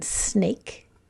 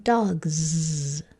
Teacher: the S sound which is the motor off sound or the z sound which is the motor on sound